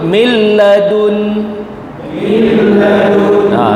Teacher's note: Jadi kita tak perlu dengung kita masukkan je masukkan je